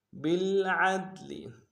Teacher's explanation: کو گہرائی سے ادا کرتے ہوئے دال کے سامنے لائیں گے، دال حروف قلقلہ سے قلقلہ کریں گے ، لام کو نون سے ادا کریں گے، بالعدل او لا